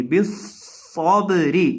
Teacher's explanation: صاد کے اندر سٹی پیدا کر کے پڑھیں گے بالصبری یہ سٹی کی آواز ہوتی ہے صاد اس طرح یہ